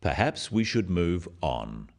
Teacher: it is said in a firm way with a falling intonation at the end practice with me perhaps we should move on this falling intonation · this falling intonation makes it a more definite statement rather than a suggestion · The first one, "Perhaps we should move on," is phrased as a suggestion, but it is said in a firm way with a falling intonation at the end.